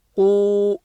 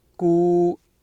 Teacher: Qaf is full mouth, qu, and then kaf, ku, nice and relaxed